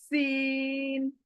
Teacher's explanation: जबान दोनों दांतों को टच करके सीन बोलेगी। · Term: सीटी वाली आवाज